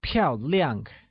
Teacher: where 漂 is said with a falling tone means elegant, and 亮, also said with a falling tone, means bright